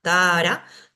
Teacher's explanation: tara, dos A largas. Alargo las dos A.